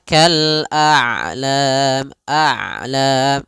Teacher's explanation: Ain itu kedua-duanya tidak terlalu dialirkan, tidak terlalu ditahan suaranya. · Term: sifat bainiah